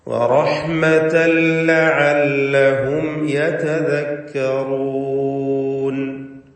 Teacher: ലഅല്ലഹും സാക്കിനത മീം ഇൽഹാർ ഷഫവി നൽകി മണിക്കാതെ വെളിവാക്കണം. · വറഹ്മതൻ ലഅല്ലഹും, റഹ്മതൻ എന്ന തൻവീൻ ശേഷമുള്ള ലാമിൽ പൂർണ്ണമായും ലയിപ്പിച്ച് മണിക്കാതെ ഉച്ചരിക്കണം. ഇദ്ഗാം ബിഗൈരി ഗുന്ന.